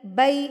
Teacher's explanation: یا ساکن سے پہلے اگر زبر ہو تو یہ یائے لین کہلاتا ہے، اور اس کو آپ نے لمبا نہیں کرنا ہوتا ہے